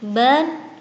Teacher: Dan kemudian lafaz sawaban, ban, terdapat bacaan mat iwat, sebab ada harokat fathatain yang dibaca panjang satu alif karena waqaf